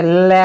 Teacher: लय जो होता है, इसके उच्चारण में वायु जीभ के पास से निकलती है। जैसे लय बोल के देखो, आपकी जीभ मुड़ जाएगी ऊपर और हवा कहाँ से? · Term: पार्श्विक व्यंजन